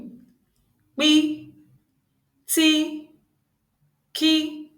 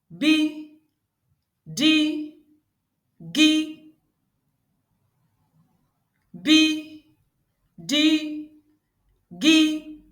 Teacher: you will feel vibrations on your throat this is because these consonants are voiced consonants